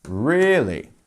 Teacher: so you want to pronounce that as a stressed first syllable